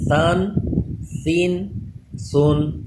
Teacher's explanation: ثا پہ بھی سیٹی پیدا نہ ہو، زبان اوپر کے دانتوں سے چپکا کے ہی پڑھیں